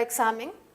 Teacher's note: La palabra examen también es una palabra grave, tiene el acento en la penúltima sílaba, debido a que termina en N, no se tilda.